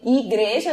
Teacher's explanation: na vogal I nós temos o i fechado de igreja